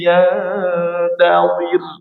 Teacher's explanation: huruf qof tebal kemudian setelahnya ada huruf d lebih tebal lebih tebal lagi